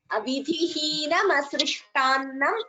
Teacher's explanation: Here, ta is Alpa Prana, not Mahaprana.